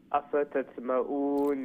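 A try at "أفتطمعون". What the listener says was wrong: أسف hold on أفا then تا then طا طا is one of the heavy letter كتفخيم means heavy and also you need to do it قلقلة on طا as well أفتتمؤون تا then طا أفتتمؤون no don't you know the ta will be very light ta then ta أفتتمؤون there should be different between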